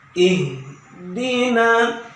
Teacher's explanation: ihdina tidak ditahan, tapi yang benar ihdina, ya, harus anginnya keluar. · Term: huruf H